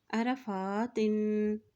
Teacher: फ़ा के ऊपर देखिए खड़ी ज़बर है तो इसको एक हरकत लंबा अदा करेंगे